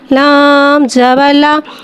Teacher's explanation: لام کو ایک الف یعنی تین حرکات کے برابر کھینچ کے پڑھیں گے.